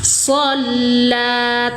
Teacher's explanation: tekan so ke huruf lam karena bertasydid, panjangkan 1 ayunan, mat tabi'i muqaddar.